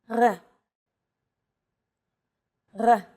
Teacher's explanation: This letter is pronounced differently than an English R. It's pronounced at the back of the throat instead of forward in the mouth.